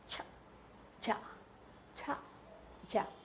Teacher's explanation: Exploding noise comes first and noisy friction comes next. That's why they are called affricates.